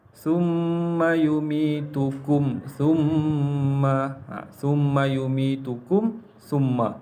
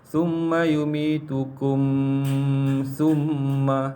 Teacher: Kita kena baca mim tu bagi jelas, tak perlu dengung. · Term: izhar syafawi